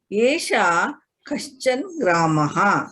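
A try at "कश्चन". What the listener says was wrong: Kaschana. Kaschana. It is not Kaschan. It is not like Hindi.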